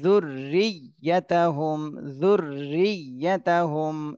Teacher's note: এখানে দুইটা রর উপরে তাসদীদ এজন্য রর উপরে একটু দেরি করতে হবে আর ইয়ার উপরে একটু চাপ দিতে হবে